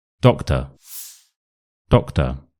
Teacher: One of these O's is a schwa, so the second one is a schwa, and the first one isn't. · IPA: /ə/